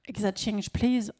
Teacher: intonation montante, en une seule unité entière, sans pause, avec un accent sur change, une intonation montante, l'intonation montante va être considérée comme inachevée et donc plus polie.